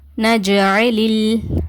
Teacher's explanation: இந்த சுக்குன் பெற்ற லேமுக்கு குண்ணா செஞ்சு ஓதக்கூடாது